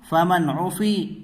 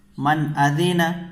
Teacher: تو یہاں پر غنہ نہیں کریں گے، ظاہر کر کے جلد پڑھیں گے